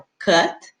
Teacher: Eu tenho o T que para, que interrompe na minha garganta, que é o cut.